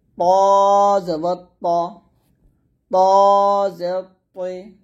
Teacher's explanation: জিহ্বার আগা সামনের উপরের ধীরেতের গোড়ার সঙ্গে লাগিয়ে তটা মোটা উচ্চারণ করতে হবে।